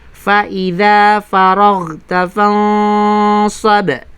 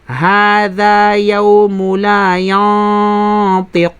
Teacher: Tulad nito, mayroon tayong nun na sakina, kasunod ay sad. Na kung kaya ang sad ay kabilang sa huruful isti'la o kaya ay makakapal na sabihin natin mga letra. Kaya naman, ang ikhfa ay makapal din. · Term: pagpapakapal ng ikhfa